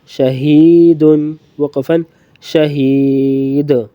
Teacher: شین زبر شاہ, ہا یا زیر ہی, شاہی, دال 2 پیش دن, شہید, وقفاً شہید. یہ یا مدہ ہے, اس کو کھینچ کر پڑھیں گے مزید وقفاً میں, صرف وقفاً میں کھینچ کے پڑھیں زیادہ.